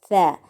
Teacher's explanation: زبان کی نوک اور سامنے والے اوپر کے دو دانتوں کا سرا، یہاں سے ثا ادا ہوتا ہے